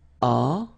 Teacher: You don't pronounce the final t, so you get the nasal on.